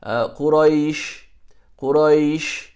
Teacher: A blend between a fatha and the ya. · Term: soft